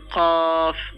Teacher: কফ জিহ্বার গোড়া থেকে উচ্চারণ করতে হবে এটা এটা হচ্ছে ক্যাফ জিহ্বার গোড়া যেখান থেকে উচ্চারণ করছেন তার